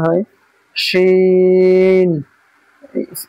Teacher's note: এই শিনের আওয়াজটা একটু সিকি টাইপের আওয়াজ হবে। জিম শিনের মাখরাজ একই, জিভের আগা, জিভের মাঝখান এবং তার বরাবর উপরের তালুর সাথে লাগিয়ে উচ্চারিত হবে শিন।